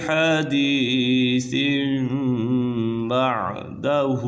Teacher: فَبِأَيِّ حَدِيثٍ بَعْدَهُ يُؤْمِنُونَ، فَبِأَيِّ حَدِيثٍ بَعْدَهُ، یہاں پر اقلاب کا قاعدہ لگ رہا ہے، کیونکہ نون ساکن یا تنوین کے بعد حرف اقلاب، حرف اقلاب یعنی با آ جائے تو اقلاب ہوگا، یعنی نون ساکن اور تنوین کو میم سے بدل کر، یہ جو چھوٹی میم لکھی ہوئی ہے اس سے بدل کر اخفا کریں گے، یعنی غنہ کر کے پڑھیں گے تو یہاں پر غنہ ہوگا۔